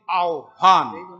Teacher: व का पहले उच्चारण फिर ह का उच्चारण